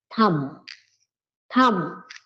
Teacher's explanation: whenever you have have that combination MB MB you have to drop the sound of B